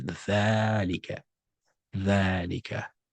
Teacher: In Arabic, ذلك behaves like that. You write ذلك without the elongation mark, but when you're reading it, you prolong it.